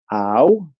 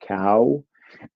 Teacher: This is a feature where the diphthong ow, which is a two-part vowel, starts at one part of your mouth, ow, and then goes to another part of your mouth, ooh, like cow, where that two-part vowel becomes a one-part vowel.